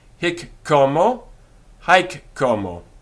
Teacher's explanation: the k of hick is doubled and the h of homo disappears